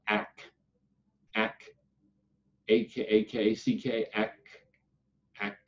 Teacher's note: make the sound of ack ack ack ack ack ack and you'll feel the back of the tongue lifts up towards the back of the teeth on the ack